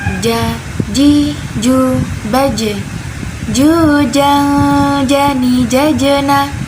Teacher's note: Dan sifatnya dari huruf ja ini jahar, tidak mengalir nafas. Tidak mengalir nafas. · Huruf ja ini ada di tengah lidah. Jadi tengah lidah, nih misalkan ini lidah kita.